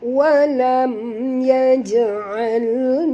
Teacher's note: Walam mim mati bertemu ya, kita kena ya, bacaannya terang tanpa dengung. Kerana mim mati, ada tanda mati, maknanya tak boleh dengung ya.